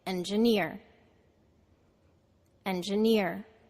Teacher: the second syllable is de-stressed Ja and the third syllable is near so we say it